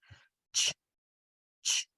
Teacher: CH is a real fast, hard, choppy sound. You have to be bold with it. You have to almost spit it out. Ch, ch. Otherwise, if it comes out any softer, it'll turn into an SH sound.